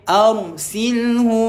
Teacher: huruf ra sukun sebelumnya berbaris atas, kita baca dengan tebal